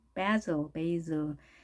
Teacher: s가 양쪽에 모음이 있게 되면 z 발음이 난 거죠.